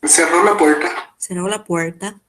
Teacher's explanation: uma característica do espanhol de Assunção, aqui no caso de Assunção, mas também em Ciudad del Este, esse R retroflexo · esse R retroflexo, né? Cerró la puerta. Cerró la puerta, que é marca do espanhol paraguaio. E que também não aparece descrito em nenhum material fonético, fonológico, como possível para um R retroflexo no espanhol.